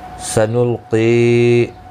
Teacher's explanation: قاف حروف مستعلیہ ہے، پر پڑھنا ہے